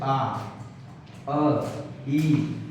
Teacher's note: तो इसमें क्या हो रहा है कि हमारे जो होठ है गोलाकार रूप में नहीं आ रहा है · आवृत्तमुखी मतलब ये हो गया कि जब हम किसी स्वर का उच्चारण कर रहे हैं तो उस दरमियान जो हमारे होठ है वो वृत्त के आकार में नहीं हो पा रहे हैं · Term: आवृत्तमुखी स्वर